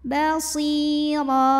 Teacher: huruf ra dibunyikan secara tafkhim karena barisnya di atas, maka dibacanya tebal, pangkal lidah angkat